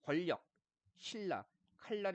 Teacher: 얘는 유음 뒤에 유음 아닌 니은이 리을로 해가지고요. 요렇게 인접한 유음 때문에 유음 아닌 니은이 리을이라는 유음으로 바뀌는 걸 유음화라고 하는 겁니다